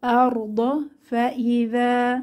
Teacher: জাল পাতলা, জিহবার আগা দাঁতের আগা নরম আওয়াজ